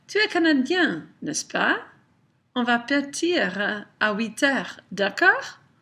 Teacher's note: I raise the intonation, I add that little tag statement, and that makes it a question. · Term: tag question